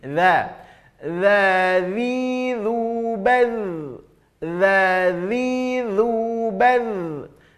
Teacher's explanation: ujung lidah sedikit keluar dari batas gigi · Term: huruf dha